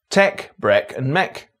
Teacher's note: some words from the FACE set are pronounced with the DRESS vowel.